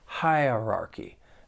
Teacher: There are 4 syllables. The stress is on that first syllable. And the second syllable, you do hear that schwa sound. Hierarchy. It's a little easier when we slow it down.